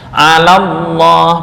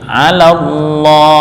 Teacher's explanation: pengucapan lafal lam dari ala yang berharakat fathah langsung masuk ke lam tasdid dari lafal Allah.